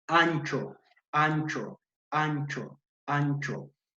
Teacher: ancho es que es un sonido para la tal porque porque la lengua va a rozar o se aproxima al paladar de nuestra cavidad bucal